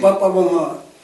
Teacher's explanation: ओठों से निकल रही है, तो इसे कहते हैं ओष्ठ्य।